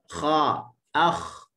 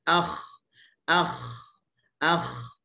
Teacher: Kha makhrajnya adalah halqum atas.